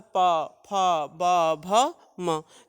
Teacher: तो पा, फा, ये तो ओठों को स्पर्श कर, दोनों ओठ जब स्पर्श करते हैं तो ये वर्ण उच्चारित होता है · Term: पवर्ग